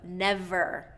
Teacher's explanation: we want to get that contact from the teeth onto the lips to get that clear v, and it's a friction sound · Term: V sound